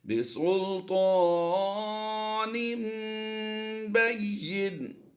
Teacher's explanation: یہاں پر ایک قاعدہ سمجھ لیجئے، جب بھی تنوین یا نون ساکن آتا ہے اس کے بعد حرف با آ جائے تو تنوین کو میم سے بدل دیتے ہیں. تنوین کی آواز کو میم سے بدل کر یہاں پر غنہ کر کے پڑھتے ہیں